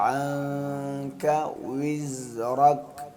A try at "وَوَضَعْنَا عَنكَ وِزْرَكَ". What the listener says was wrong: عین کے ساتھ ہے، یہاں عین ہے نا. واو کو ہولڈ گول کر کے، ہولڈ گول کر کے واو، ہولڈ گول کر کے وی وی.